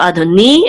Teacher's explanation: the accent again is over the nun, which means it's on the last syllable